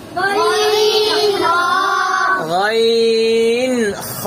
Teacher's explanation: হলকের শেষ হইতে কি উচ্চারণ হয়? গইন খ।